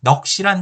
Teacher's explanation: 예로 넋이란 단어는 기역, 시옷 받침으로 쓰지만 발음상으로는 시옷이 탈락하고 기역만이 남게 되는 것입니다. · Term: 자음군 단순화